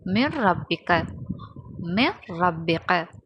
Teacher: அந்த நூனை ராவோட இணைத்து ஓதணும் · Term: இதுகாம் பிலா குன்னா